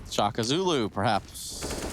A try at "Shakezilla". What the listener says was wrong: Yeah, Shaka. Where's the A? Where's the U at the end?